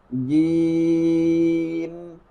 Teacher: زبان کے درمیان سے اور تالو کے وسط دونوں کے درمیان سے ادا کریں گے